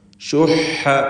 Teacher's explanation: ഹാ തൊണ്ടയുടെ മധ്യത്തിൽ നിന്ന് ഉച്ചരിക്കേണ്ട അക്ഷരമാണ്. വസത്തുൽ ഹൽഖ് ആണ്.